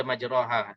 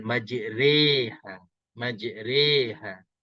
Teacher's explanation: Kalau di sini dia tulis ada macam tanda ni, petak ni. Majriha kita kena baca antara baris atas dan baris bawah, tapi dia lebih kepada baris bawah. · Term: imalah